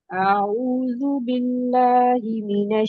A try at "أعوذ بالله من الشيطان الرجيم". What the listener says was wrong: आइन को ठीक करिए।